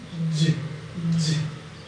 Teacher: affricate, complete closure and slow release. Think of the railway engine.